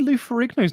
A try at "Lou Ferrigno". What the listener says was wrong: Lou Ferrigno. put the G in the wrong place. Lou Ferrigno.